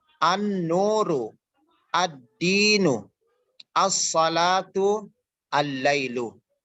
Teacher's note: cara pembacaannya alnya tidak tidak jelas tapi diidghamkan, dimasukkan kepada huruf al-syamsiyah yang ada di depannya